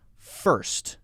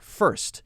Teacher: you have to jump from the R sound right into the s erse earth so your tongue is curled back and up and